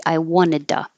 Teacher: The to T changes to D and the oo changes to so it could be I wanted to.